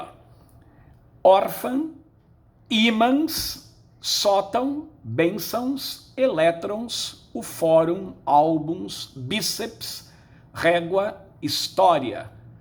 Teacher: em todas elas a sílaba tônica é a penúltima todas são paroxítonas